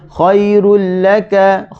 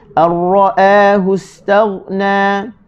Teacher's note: nun mati bertemu dengan ra, masuk tanpa dengun